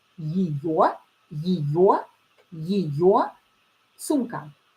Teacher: here ye will be a little bit reduced. It will be pronounced as и.